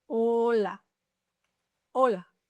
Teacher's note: The H is there, but you don't pronounce it. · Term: H muda